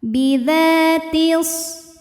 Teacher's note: Dha mad tabi'i zahiri karena ada alif didahului fathah, maka huruf dzal panjang 2 harokat.